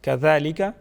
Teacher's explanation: ذال کو نرم پڑھا جائے گا، ذال کے اوپر کڑی حرکت ہے، اس کو ایک الف کے برابر کھینچ کے پڑھیں گے